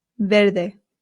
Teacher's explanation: good next one ver now remember I told you that the v in Spain makes a light B sound